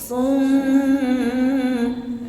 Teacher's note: ditutup hilang suaranya itu sudah kisum walaupun tidak terlalu jelas terdengar sengaunya